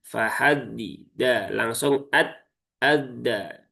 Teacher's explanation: Jangan sampai tersisip di antara dua dal ini ya ada huruf t-nya ya. Jangan sampai seperti itu. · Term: dal sukun